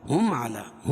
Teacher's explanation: میم ساکن کے بعد میم اور با کے علاوہ کوئی تیسرا حرف آ رہا ہے تو وہاں اظہار شفوی ہوگا، اس کو ظاہر کر کے پڑھیں گے